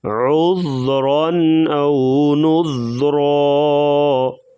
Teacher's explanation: عذرا یہاں پر دو زبر کی تنوین ہے، اس کے بعد رفع القی حمزہ آ گیا، تو یہاں پر اظہار کریں گے، یعنی غنے کے بغیر پڑھا جائے گا، نذرا، اور را کو وقفاً جو ہے پر پڑھا جائے گا۔